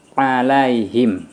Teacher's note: Kalau kita samakan dengan a biasa dengan la, kalau ain agak tertekan kayak dicekik.